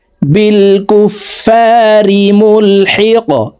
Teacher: কফ কলকলার হরফ উপরের দিকে ধাবিত করে ধাক্কা দিয়ে এই কফ হরফকে সাকিন করে ফেলবো